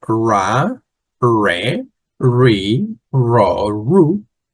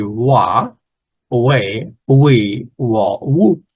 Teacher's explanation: In Haitian Creole, they used to delete the R, change it by W, and you say wa, we, wa, wu, because the sound is similar to the one that is supposed to be, which is ah, I, o, u.